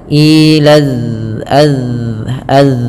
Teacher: sifatnya adalah sifat rokhawah, mengalirnya suara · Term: zal